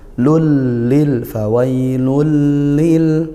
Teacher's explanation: Idgham bila gunnah, yaitu dibaca masuk tanpa dengung, langsung masuk.